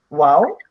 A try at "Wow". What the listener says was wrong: Not wow. You gotta stress it. You say wow. It means you are surprised, right?